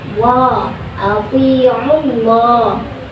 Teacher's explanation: Lam pada lafaz Allah dibunyikan secara tafkhim sebab huruf sebelumnya yang ain berbaris dhammah, maka bacanya tebal.